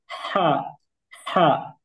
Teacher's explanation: এটার মধ্যে মাখরাজগত পার্থক্য সেটা হচ্ছে, এটা হলো আমাদের যে কণ্ঠনালী, এই কণ্ঠনালীর মধ্যখান থেকে এই হরফটা উচ্চারণ হয়। অর্থাৎ একটু ফ্যাস ফ্যাস আওয়াজ হয়। যেমন আমাদের আশেপাশে অনেক হাঁস, এক জাতের হাঁস আমরা দেখেছি যে ফ্যাস ফ্যাস করে ডাকে। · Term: বড় হা